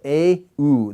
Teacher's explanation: But when I say A and U, okay, neither of them glide into a Y or a W sound. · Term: monophthongs